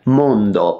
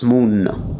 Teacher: ND becomes NN. Mondo becomes Munno.